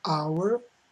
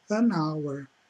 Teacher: começa com H, mas o som é de vogal, então é an hour, e não a hour, é an hour. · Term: som de vogal